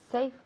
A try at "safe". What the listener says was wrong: Ok, ¿me preguntas o me lo dices?